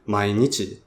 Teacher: I don't speak standard Japanese. But in Kansai pitch, it'll be low, low, high, low.